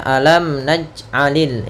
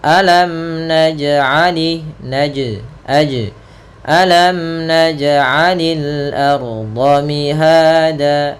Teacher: Harusnya mantul huruf jim karena dia termasuk huruf qalqalah yang harus ittirab.